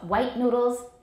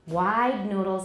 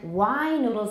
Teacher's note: even longer than wide noodles because it's an open syllable so we have three different lengths depending on what comes after the diphthong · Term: the length of the vowel